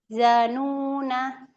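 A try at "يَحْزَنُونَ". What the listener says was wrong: Suaranya jangan keputus ya. Yahzanuna.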